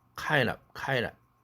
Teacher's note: 그래서 드가 날아가서 kind가 된다